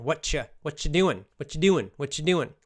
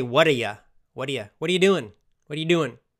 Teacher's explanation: when people say this phrase very fast, sometimes it's with like that CH sound